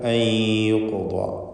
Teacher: അയ്യുഖ്ദാ സാക്കിനത്തായ നൂനിനെ ഇദ്ഗാം ബിഗുന്ന ചെയ്ത് യായിലേക്ക് ലയിപ്പിച്ച് മണിക്കുക